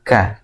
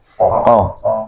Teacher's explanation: Kalau ka itu pengucapannya tipis ya, dan kemudian ada nafas yang mengalir ya, ka. Berbeda dengan ko ini nafasnya tertahan ya